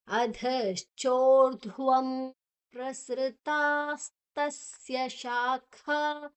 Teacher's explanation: ಧಾದ ನಂತರ ಅಲ್ಲಿ ಅನುಸ್ವಾರದ ಉಚ್ಚಾರಣೆ ಮ, ಯಾಕೆ ಮುಂದಿನ ಅಕ್ಷರ ಪ ಪ ಇದೆ, ಪ ಪ ಬ ಭ ಮ ಮಾದ ಅರ್ಧ.